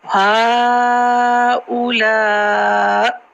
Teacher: تو جب ہا اولا کے بعد اس کی حمزہ ہے اس کو ساکن کر دیں گے کیونکہ ہم یہاں پر وقف کر رہے ہیں